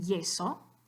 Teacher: the palatal means your tongue is getting close to the hard palate. You've got y as in yeso, so it's palatal, fricative.